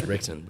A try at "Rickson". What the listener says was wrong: It's Hickson. The R is silent. It's Portuguese. It's Hickson, but it's spelled like Rickson.